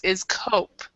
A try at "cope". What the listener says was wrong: Yeah, cope instead of cop. Cope like hope.